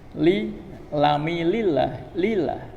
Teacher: Kemudian lafal lillahi, lamnya ini dibaca dengan tarqiq.